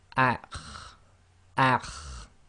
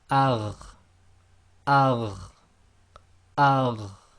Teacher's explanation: The top of the throat then is the letter kha and ghain. So we've got them in red here because they are the heavier letters.